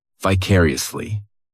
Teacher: This adverb has 5 syllables, and the stress is on that second syllable.